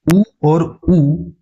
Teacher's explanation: इन्हें हम ओष्ठ स्वर कहते हैं क्योंकि इनके उच्चारण में ओठ का उपयोग हो रहा है